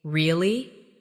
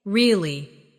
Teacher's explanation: really? With a rising tone to show surprise. Now say, really? With a falling tone to show you don't believe someone. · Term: intonation